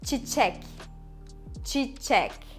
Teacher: And çek is the second syllable. So çek has the stress. We emphasize on çek.